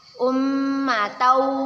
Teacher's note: Ummatau tanwin bertemu dengan huruf wa. Hukum bacaannya ialah idgham bi gunnah.